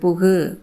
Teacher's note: கடைசியில் இருக்கக்கூடிய கு அப்படிங்கிறது குறைந்து ஒலிக்கவில்லை, முழுமையாக ஒலிக்கிறது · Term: முற்றியலுகரம்